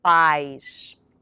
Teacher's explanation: remember that pais is one syllable and that the AI sound sounds just like the letter I in English